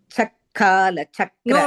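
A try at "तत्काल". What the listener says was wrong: No, cha கிடையாது bagini.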